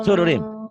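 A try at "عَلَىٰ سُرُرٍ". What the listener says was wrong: Gak ada panjang. Ala sururim. Tadi udah baca, salah lagi. Sama kan dengan yang tadi kau baca. Tadi salah, ini salah lagi. Ala sururim. Sururim. Pendek. Sururim. Pendek. Ala sururim.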